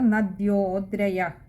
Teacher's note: പിന്നെ അടുത്തത് നദ്യോദ്രയ, അവിടെ വിശ്ലേഷണമുള്ളത് കൊണ്ട് ഒകാരം നീട്ടിയെടുക്കുക, പകുതി ഹകാരത്തിൽ വായിക്കുക.